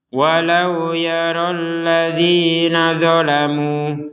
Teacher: mu-nya ini 2 harokat. Kenapa? Karena tidak digabungkan dengan hamzah. Kalau digabungkan baru 4 sampai 5 harokat.